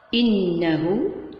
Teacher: عندنا غنة النون مقدار 2 حركات